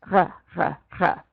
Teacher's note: back of your throat it's kind of like you're coughing and the back of your throat is all phlegmy and gooby